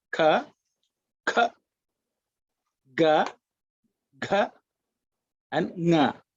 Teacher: So these are the 5 vargas or classes of consonants, which we looked at: ka, kha, ga, gha, and nga, which is produced at the throat level